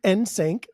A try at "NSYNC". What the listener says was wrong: stop saying n sank that's what it is it's not sank it's not s an K It's s YN k